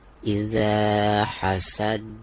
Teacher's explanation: ketika membaca iza, maka di sini harus dipanjangkan 2 harokat ya. Karena dihukumi mad tabi'i ya, ada huruf hijaiyah yang berharakat fathah, lalu di depannya adalah alif sukun.